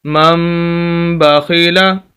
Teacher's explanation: गुन्ना भी करना है, नाक में आवाज़